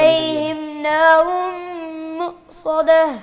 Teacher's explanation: مؤصدہ ہونٹوں کو گول نہیں کرتے، ساتھ کو موٹا کریں.